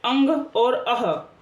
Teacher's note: इनकी जो ध्वनि है वो नासिका और मुख दोनों से निकलती है। नाक और मुंह दोनों से निकलती है। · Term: अयोगवाह